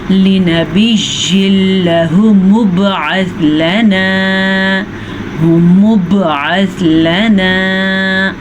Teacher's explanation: قاعدے کے حساب سے تنوین کے بعد لام یا را آ جائے یا نون ساکن کے بعد لام یا را آ جائے تو دونوں کو آپس میں ملا تو لہیں گے، جیسے کہ شد ہے تو ملائیں گے لیکن غننے کے بغیر ملائیں گے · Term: ادغام بلا غنہ